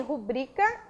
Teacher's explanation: Quando nós pronunciamos rubrica, o que acontece? Nós temos a sílaba tônica bri.